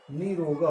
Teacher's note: ये जो नी छोटी ई है ये बड़ी ई हो जाएगा, दीर्घ हो जाएगा, और विसर्ग गायब हो गया, नी रोगा हो गया।